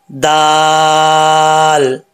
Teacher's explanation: अब इसको दौल नहीं पढ़ना, मोटा पढ़ेंगे तो गलत हो जाएगा। दाल मोटा नहीं होता, ठीक है। और दौद के मखरज से भी बचाना है इसको।